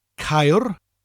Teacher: Spelled C-A-E-R-D-Y-D-D. The first syllable ends with a rolling R